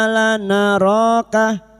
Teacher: alif kecil di atas ro dua harakat kita panjangkan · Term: mad th'i